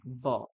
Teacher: ঠোঁট কিন্তু একসঙ্গে করবেন না, উপরের পাটির দাঁত এবং নিচের যে ঠোঁটটা রয়েছে সেটাকে একসঙ্গে করে ব বলুন দেখি, স্পষ্ট বকার আসবে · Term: অন্তঃস্থ ব